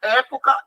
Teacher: Época é a antepenúltima, ela é proparoxítona